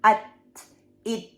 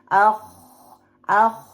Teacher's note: So, in Hams, the vocal cord is open.